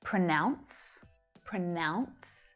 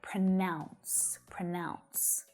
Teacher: we have the verb pronounce pronounce and that has the ow vowel sound in there pronounce pronounce but the noun pronunciation pronunciation has that uh vowel